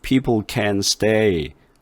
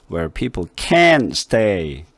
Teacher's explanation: 목소리 톤을 높여가지고 T자 발음을 없애버리다시피